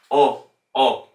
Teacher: If you don't round the lips fully, you'll get more of like an English O sound.